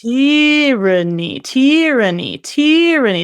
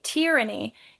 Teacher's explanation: with tyranny, for some weird reason, we emphasize the first syllable